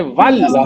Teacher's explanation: Hamza will not be pronounced and waw will meet lam. Waw goes to meet lam and you say wal.